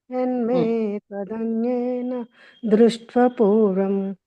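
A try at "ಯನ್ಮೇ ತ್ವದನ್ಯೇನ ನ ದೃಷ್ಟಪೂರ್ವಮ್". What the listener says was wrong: ಇಲ್ಲ ಇನ್ನೊಂದು ನ ಇದೆಯಲ್ಲ ಅದನ್ನ ಬಿಡ್ತಾ ಇದ್ದೀರ ನೀವು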